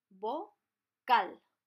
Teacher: Cal is the strong syllable. It has the strength of the pronunciation.